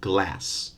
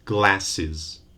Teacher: It has one syllable only, glass. So when you add this final S for the plural, you end up having 2 syllables, glasses.